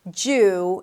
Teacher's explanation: it's a long vowel, so make sure you round your lips. Jew, and then close it with an N.